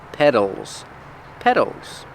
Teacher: we spell it with the t but it's pronounced with the fast d sound